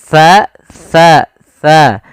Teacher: tsa tsa tsa itu ujung lidah nempel dengan gigi dari atas